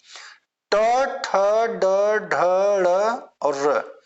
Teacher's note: यह देखिए मूर्धा से बोले जाने वर्ण है इसलिए इसको हम मूर्धन्य कहते हैं